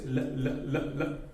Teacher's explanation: you just flap your tongue in the alveolar ridge. L. The tongue is flapping here.